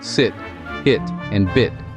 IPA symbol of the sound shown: ɪ